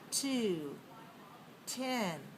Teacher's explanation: When the word starts with a T sound, then we have a very strong puff of air, especially in a stressed syllable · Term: strong T